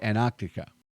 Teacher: Americans often say Antarctica. Like the first T is silent.